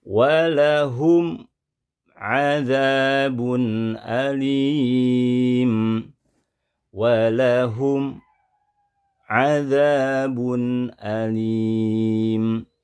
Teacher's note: Mimnya terbaca jelas namun muncul sakta, yaitu menghentikan bacaan. Ada jeda dulu. Ini pun kesalahan yang harus dihindari saat kita membaca izhar syafawi.